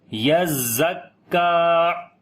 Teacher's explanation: زا اور کاف دونوں کے اوپر شد ہے، تو اسی طرح تھوڑا سا سخت کر کے پڑھیں گے ، یز پہلے یا کو زا کے ساتھ ملائیں گے، یزکا،